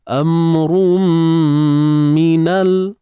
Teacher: Okey, tanwin jumpa dengan mim ni idgham bi gunnah, IBG. Masukkan tanwin tu rum secara sempurna. · Mim mati jumpa nun, izhar syafawi sekali lagi. Jelaskan mim tu tanpa dengung yang panjang.